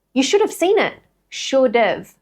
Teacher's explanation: We're taking the D from should, linking it to that kind of schwa sound that's in there.